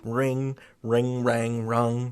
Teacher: This vowel sound, actually bounces along your mouth. It goes from front to middle to back as you go further and further back in time. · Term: the vowel changes